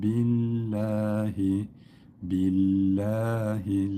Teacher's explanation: lamı ince okuyoruz çünkü kendisinden önceki harfin harekesi esreli